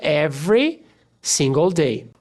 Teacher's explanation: Every, esse E não é pronunciado, every single day.